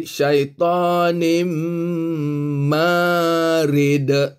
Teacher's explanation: Nim ni adalah idgham ma'al ghunnah. Sebab tanwin bertemu dengan mim. Ada tanda kat situ, iaitu mim ditaruh sabdu, menandakan dia adalah idgham ma'al ghunnah, kena dengung 2 harakat.